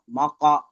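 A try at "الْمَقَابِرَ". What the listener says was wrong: হরফে মাদ্দাগুলো টান হচ্ছে না কেন? হরফে মাদ্দাগুলো টান ছেড়ে যাচ্ছে। কফ আলিফ যাবর ক, ওটা তো টান দিয়ে পড়তে হয়।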